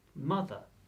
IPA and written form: ˈmʌðə (Mother)